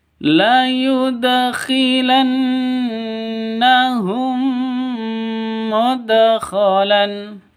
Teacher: Mim mati bertemu dengan mim ini langsung masuk ke mim yang kedua disertai dengung. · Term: idgham mimi